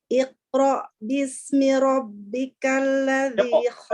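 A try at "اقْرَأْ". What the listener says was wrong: Aina al-qalqalah? Iqra. Qalqalah. Iqra. Qalqalah. Iqra.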